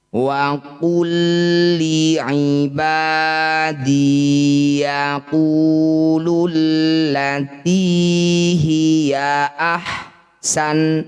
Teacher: Ya, lam sama-sama dengan lam atau huruf kembar. Cara bacanya bunyi lam pertama langsung masukkan pada lam kedua, tidak usah didengungkan. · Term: idgham mutamadsilain, idgham mutamatsilain